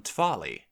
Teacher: But then we do have this change where W becomes V when it's following an obstruent or word initially. So that means that twali would become tvali.